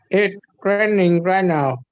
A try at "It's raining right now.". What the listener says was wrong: Okay, so you need to work on the contraction. You don't have the contraction down. It is the same as it's. It's.